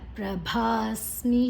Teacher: ಭಾ ದೀರ್ಘಾಕ್ಷರ ಬೊಕ್ಕ ಮಹಾಪ್ರಾಣ